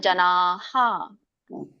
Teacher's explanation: ಕೂಡಿದೆ ಅ ಕೂಡಿದೆ ಅಲ್ಲ ಹಾಗಾಗಿ ನ ಪ್ಲಸ್ ಅ ನ ಹೇಳ್ತೇವೆ ಹಾಗೆ ಈ ವಿಸರ್ಗ ಕೂಡ ಹ ಪ್ಲಸ್ ಅ ಹ ಆಗುತ್ತೆ